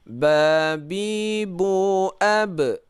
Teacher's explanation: Kenapa qalqalah? Karena ba ini hukumnya qalqalah, harus pantul.